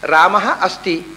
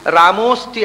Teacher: ಆ ವಿಸರ್ಗ ಹೋಗಿ ಓಕಾರ ಆಯಿತು, ಮುಂದಿನ ಅಕಾರ ಹೋಗಿ ಬಿಡುತ್ತೆ. ಏನು ಹಿಂದೆ ಆಹಾ ವಿಸರ್ಗವೂ ಇಲ್ಲ, ಅಕಾರವೂ ಇಲ್ಲ, ಎರಡೂ ಇಲ್ಲ, ರಾಮೋಸ್ತಿ. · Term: ಸಂಧಿ